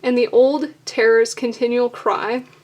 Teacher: And the old is stressed because it's an adjective.